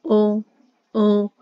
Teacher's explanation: और ओष्ठ और कंठ, ये देखिए ओ, ओ। ये जो ओ बोल रही है इसमें हमारी होठों की शेप गोल हो रही है और आवाज आ रही है कंठ से, तो ये हमारे कंठोष्ठ है, कंठ और ओष्ठ।